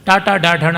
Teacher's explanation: ಟಾಟಾ ಡಾಢಣ ನಾಲಿಗೆ ಮಡಚಿನಿಂದ ಮೂರ್ಧನ್ಯ ಅಂತ ಆಗುವಂಥದ್ದು